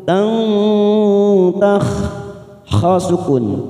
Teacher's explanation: Tak marbuto di sini berharokat fathah tanwin bertemu tak, namanya ikfa aqrab. Kita samarkan 3 ketuk.